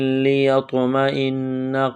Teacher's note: نون مشدد ہے، غنہ کریں گے، آواز ناک میں چھپائیں گے